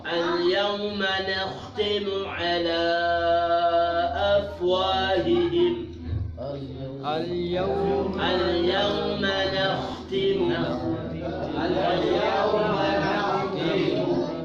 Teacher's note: Ini huruf kha. Apabila dimatikan, matinya menebal.